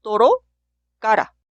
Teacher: podemos pronunciar como r en español pero r que se ubica entre las vocales